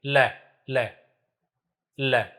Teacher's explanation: और वो पार्श्विक ल इसलिए है कि ल का उच्चारण इस प्रकार से होता है कि जीभ के दोनों ओर से वायु बाहर निकलती है।